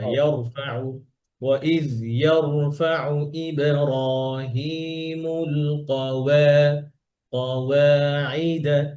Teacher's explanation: এই ওয়াওটা পাতলা হবে, কওয়া না কওয়া, আর র এটা মোটা।